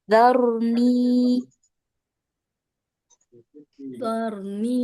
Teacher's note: kalau huruf ra sukun huruf sebelumnya itu berharakat fathah, ra sukunnya dibaca tafkhim atau tebal ya, jadi pangkal lidahnya diangkat. Tapi kalau sebelumnya kasrah, ra sukunnya menjadi tarqiq atau tipis.